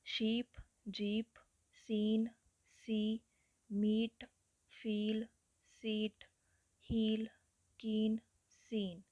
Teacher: ਸੋ front close ਅਨਰਾਊਂਡਡ ਵੌਲਸ ਨੂੰ ਆਈ symbol ਦੇ ਨਾਲ ਰਿਪਰਜੈਂਟ ਕੀਤਾ ਜਾਂਦਾ ਹੈ ਔਰ ਇਹਦੀ ਸਾਊਂਡ ਜਿਹੜੀ ਹੈ ਲੌਂਗ ਈ ਵੀ ਮੰਨੀ ਜਾਂਦੀ ਹੈ